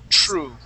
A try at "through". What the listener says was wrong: Make sure that when you pronounce that TH, you stick your tongue between your teeth and you say through. Through.